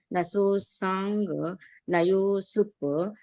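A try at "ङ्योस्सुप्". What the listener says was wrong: Nyosup. It is not Nayosup. If you are telling Nayosup, you are telling full swara. That is Gunitakshara.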